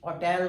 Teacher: इस शब्द के सेकंड सिलेबल पर स्ट्रेस लगा है, नाउन होने के बावजूद भी सेकंड सिलेबल पर स्ट्रेस लगा है क्योंकि इसको होटल बोला जाता है, नॉट होटल।